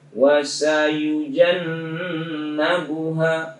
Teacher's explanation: Kemudian nun tasdid wajib gunnah, wasayujannabuha, itu nun tasdidnya didengungkan ya, diunnah